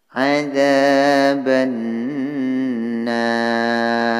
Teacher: Nar ini mad arid disukun karena mad yang berupa alif bertemu dengan huruf hidup yang berupa ro dibaca waqaf. Panjangnya boleh 2 harakah, 4 harakah dan 6 harakah. Kemudian ro-nya di sini ro tafhim.